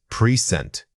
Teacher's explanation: if present means being here, the emphasis falls on the first syllable. If it refers to a gift, the emphasis shifts entirely to the second syllable. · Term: stress